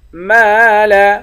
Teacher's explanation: میم کے بعد الف ہے، الف حروف مدہ ہے، اس کو بھی ایک الف کے مقدار کھینچ کر پڑھیں گے